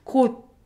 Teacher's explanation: You stop right before you're about to produce D sound.